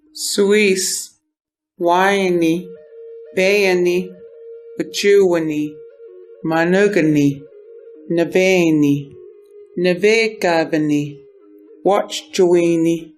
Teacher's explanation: The last vowel of a word is often whispered, giving the language a very soft, breathy, and distinct musical quality. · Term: devoiced vowels